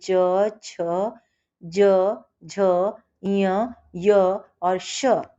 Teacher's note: तालव्य, तालु से बोलते च, छ, ज, झ, य, य और श